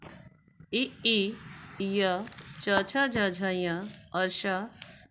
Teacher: ई य च छ ज झ य और श ये तालु से बोले जाते हैं